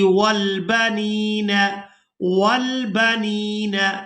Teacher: نون کو یاء مدہ کے ساتھ ملاتے ہوئے کھینچ کر ادا کریں گے